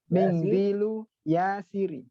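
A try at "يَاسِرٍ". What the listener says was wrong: Yasirin. Tanwin ya. Ya, mindilu. Dibacanya nggak perlu pakai ikhfa ya, jadi nggak perlu mingdilu, tapi mindilu saja.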